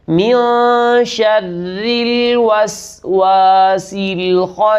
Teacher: اس مقام پر را کو باریک کریں گے، اس لیے باریک کریں گے کہ را کے نیچے زیر ہے